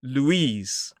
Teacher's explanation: Two syllables. Stress is on the second. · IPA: /luːˈiːz/